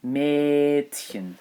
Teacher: Now the D is pronounced as a T here